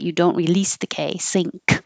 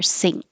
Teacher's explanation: But I put that little mark there to remind you that you don't release the K. Sink. You hold it there. Sink. So if there was a consonant after it, you're not going to hear it.